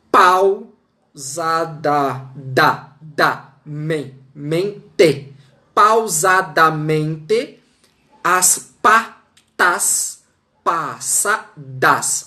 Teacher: eu tenho em um único verso uma sucessão de consoantes oclusivas